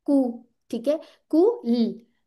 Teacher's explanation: और यहाँ पे क्या है, दौमा लिखा हुआ है, तो इस पे रोलिंग करनी है। आप क्या, आपका जो मुंह होगा ना, होंठ वो गोल होंगे, कु, ठीक है, कु ल, और यहाँ पे अनरोल हो जाएंगे, वरना आपकी आवाज ऐसी निकल आएगी, कुल, कुल।